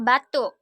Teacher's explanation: bunyi uh dengan ciri-ciri agak tinggi belakang bulat